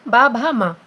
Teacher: तो इसमें तंत्रियों में कंपन हो रहा है, तो उसको हम बोलते हैं घोष।